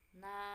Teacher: Kemudian ada huruf nun fathah diikuti dengan alif tanpa harokat, maka dibaca dengan na panjang 2 harokat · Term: mat tobi'i